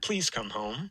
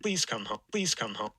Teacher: This first P is aspirated, as I think you can hear. So this person got that right, and that L will tend to be voiceless right after an aspirated stop like that.